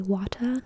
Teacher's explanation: British English, Australian English, New Zealand English are non-rhotic. They'd say wata or some variation thereof instead of fully pronouncing the R sound.